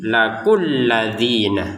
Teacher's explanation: Jadi, yang kita awalnya barusan baca laku dua harakat karena bertemu dengan tasydid di atasnya lam ini, maka langsung saja dibacanya lakulladzina tidak ada panjang sama sekali.